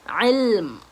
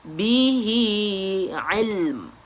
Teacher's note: Bila ada huruf mim kat situ, bila kita waqaf dekat situ, maka bibir kita pun perlu dirapatkan.